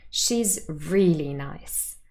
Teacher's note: we want to emphasize how nice she is she's really nice so there is emphatic stress on the word really